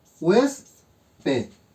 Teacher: Localizo mi sílaba tónica, que es hues. Por lo tanto, es una palabra grave.